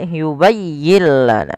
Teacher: Pada lafal yubayyi tekankan di huruf ya, bukan yubayyi lana, tapi dia yubayyin lana.